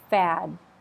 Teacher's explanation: So there's a D there. I need to hear a definite stop.